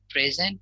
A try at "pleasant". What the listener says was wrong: la, la, la, la, la. Yes, but with the L. La. P. P. L.